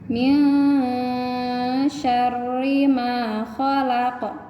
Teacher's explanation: Ya, bacanya disamarkan, ada nun sukun bertemu dengan huruf sya. Jadi n-nya dibaca samar, tidak dibaca n. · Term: ikhfa